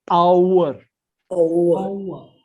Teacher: Now that H we have to swallow.